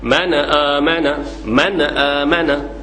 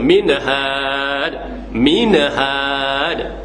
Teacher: kita menambahkan bunyi Qalqalah di hujung Nun tu salah